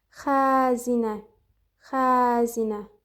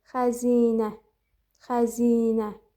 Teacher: Deməli burda da xəzinə i uzun tələffüz edilirmiş.